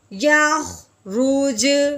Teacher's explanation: جیم حروف قلقلہ کے اوپر جب جزم آتی ہے، جب اس کو ساکن کرتے ہیں تو وہ کیا ہوتا ہے؟ ہلا کے پڑھتے ہیں